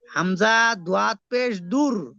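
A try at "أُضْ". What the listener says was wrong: দূর কেন বললেন? উদ।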